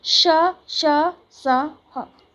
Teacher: इनका उच्चारण करते समय मुंह से हवा के रगड़ खाने के कारण ऊष्म यानी कि गर्मी पैदा होती है, यानी कि जब हम बोलते हैं तो हमारे मुंह से गर्म हवा निकलती है, इसीलिए इन्हें ऊष्म व्यंजन कहते हैं।